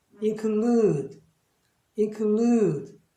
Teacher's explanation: 동사니까 일반적 동사는 액센트가 뒤쪽에 있습니다. 그리고 액센트가 있고 끝에 E가 있고 둘 사이에 자음이 하나 껴있으니까 얘는 복모음으로 발음하는 뜻이겠죠.